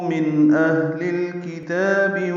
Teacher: من اہل الکتاب میں اظہار ہے، نون ساکن کے بعد حمزہ آنے کی وجہ سے، حمزہ اور ہا دونوں اقصی حلق سے ادا ہوتے ہیں۔ اور ہا ساکن ہے، اس میں ہمس ہوگا، سانس جاری رہے گی۔